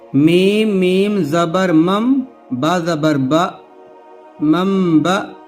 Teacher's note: جیسے دیکھیے نون ہے، نون ساکین ہے، اس کے بعد چھوٹا سا میم لکھا ہے، نون ساکین کے بعد با آیا ہے، تو یہاں نون کی جگہ پر میم پڑھیں گے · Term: اقلاب